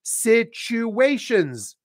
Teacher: there's a hidden W in there